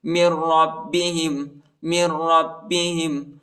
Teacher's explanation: میم کو را کے ساتھ ملائیں گے، نون ساکنہ ہی نون نہیں پڑھا جاتا